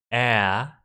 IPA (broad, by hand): æ